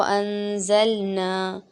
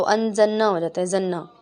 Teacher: ज़ल और ना, डायरेक्ट लाम के फ़ौरन बाद ही नून आ रहा है, तो अनज़न्ना हो जाता है